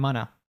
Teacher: Oftentimes, gonna will reduce to unna. So he says, instead of saying I'm going to, he says, I'm gonna.